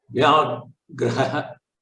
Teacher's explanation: So here, if you see in this, Vya is a Sanyuktaksharam. Similarly, Ghra is a Sanyuktaksharam along with the Mahaprana. Vyagraha is the right pronunciation.